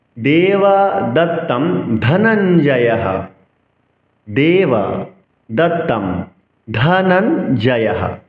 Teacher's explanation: ধ মহাপ্রাণ উচ্চারণ করতে হবে।